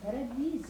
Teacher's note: Scrivo paradiso e pronuncio una S sonora.